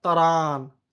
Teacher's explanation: त्र का उच्चारण तर हो जाता है